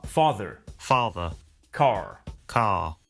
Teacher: notice that the final R sound is not pronounced in British English